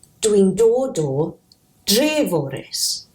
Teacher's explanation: Because following the O, the T in Treforys softens to a D